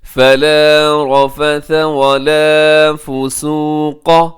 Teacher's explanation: فسوق اس میں قاف موٹا رکھیے گا، اسے اپنے باریک نہیں ہونے دینا